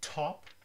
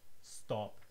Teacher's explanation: Very strong puff, no puff.